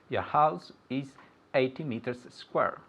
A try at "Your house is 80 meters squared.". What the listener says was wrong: Squared. Okay, this is a very common mistake of dropping off the final letters of the word. Okay, 80 meters squared.